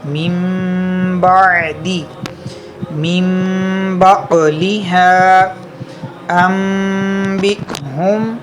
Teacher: تو ہم لوگوں نے تعریف یہ پڑھی تھی کہ نون ساکن یا تنوین کے بعد حرف با آ جائے تو اقلاب ہوگا، یعنی نون ساکن اور تنوین کو میم سے بدل کر اخفا کریں، یعنی غنہ کر کے پڑھیں گے. ٹھیک ہے، نون ساکن یا تنوین کو میم سے بدل کر اخفا کریں گے یعنی غنہ کر کے پڑھیں گے تو یہاں پہ غنہ ہوگا.